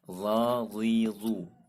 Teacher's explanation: dia isti'ala, terangkat suaranya, dan dia termasuk huruf yang tebal. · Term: huruf za